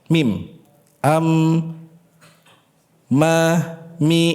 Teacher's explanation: Huruf mim sakinah itu berasal dari syafatain. Mim am ma mi itu dari makhrajnya syafatain.